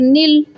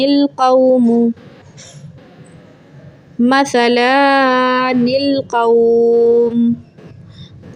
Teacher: ज़ुबान की नोक ऊपर वाले दो दांतों की जड़ों से लगेगी, आगे वाली जो नोक है ना वहाँ से लगेगी, और नरमी से पढ़ेंगे।